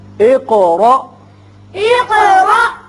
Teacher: قاف کی صفت قلقلہ اور آگے الف ساکن جو ہے جھٹکے سے پڑھا جائے گا